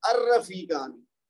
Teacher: وہ لام کی آواز نہیں آتی، حمزہ کی آواز آتی ہے، اور اس کے بعد اگلا جو حرف پہلا ہوتا ہے اسم کا وہ مشدد بن جاتا ہے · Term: حرف شمسی